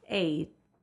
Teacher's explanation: Your jaw has to open, then come back up, and your tongue goes up for t.